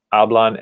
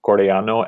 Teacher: n and corellano ending in o which is a vowel and in every single case we have the stress on the second to last syllable so we don't see any accent marks on these words that